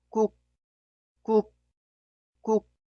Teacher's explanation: Debe detener el flujo de aire, por eso es casi inaudible. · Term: consonante final